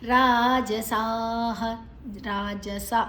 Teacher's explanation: ಜ ಮಾತ್ರ ಹೃಸ್ವ ಉಳಿದದೆಲ್ಲ ದೀರ್ಘ ಅಕ್ಷರಗಳು